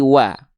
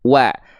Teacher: Apabila dia dibaca tetap dengan vokal A, tidak berubah menjadi vokal yang lain ketika berharokat fathah, maka dia termasuk ke dalam huruf yang karakter pelafalannya adalah muraqqaqah atau tipis. Ya, maka huruf waw di sini dia termasuk ke dalam huruf yang tipis karena vokalnya vokal A.